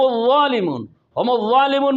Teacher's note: ہم الظالمون میں ظا میں صفت استعلاء اور اطباق ہے، اسے ہر حال میں موٹا کرنا ہے